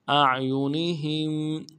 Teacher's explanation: ہا کو میم ساکن کے ساتھ ملانا ہے، میم ساکن غنہ کریں گے